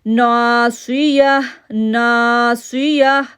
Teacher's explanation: صاد کو موٹا پڑا، یا کو ہا کے ساتھ جوڑ دیا کیونکہ تائے مربوطہ ہونے کی وجہ سے ہم نے اس کو ہا میں تبدیل کر دیا.